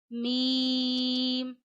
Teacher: अदा किया जाता है दोनों होठों के खुश हिस्से से · आप जबान के किनारे और ऊपर के दांतों की जड़ों से अदा करते हैं